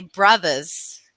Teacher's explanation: I never pronounced my R's at the end of the words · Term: New York accent